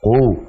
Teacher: Kemudian qafnya tebalkan. Jadi qu, jangan ku.